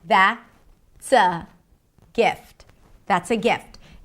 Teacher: And the pitch goes from high to low. That means I've ended the thought.